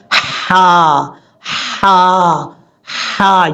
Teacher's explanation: اس کے بعد ہا ہے، ہا بریک ہے، یہ ہا جو ہے حلق کا جو درمیان والا حصہ ہے، ابھی آپ کو میں نے 3 حصے بتائے تھے، گلے کے درمیان والا، وہاں سے یہ ہا پڑھا جاتا ہے